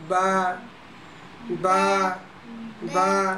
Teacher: বা হচ্ছে দুই ঠোঁট দিয়ে পড়তে হয় এইভাবে। বা বা বা।